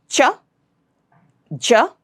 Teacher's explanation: the sounds will have to come out with a burst of air